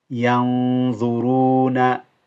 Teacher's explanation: the noon ghunna, you hold the noon, is quite heavy